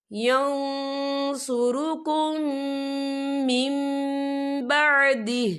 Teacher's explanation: ہم پچھلے میم کو اگلے میم کے ساتھ ملا کر پڑھیں گے، اور ہم یہاں غنہ بھی کریں گے · میم ساکن کے بعد جو ہے میم مشدد والا حروف آ رہا ہے، تو یہاں پر ادغام شفوی ہوگا، تو ہم پچھلے میم کو اگلے میم میں مدغم کریں گے، اور ہم یہاں غنہ بھی کریں گے۔ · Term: اقلاب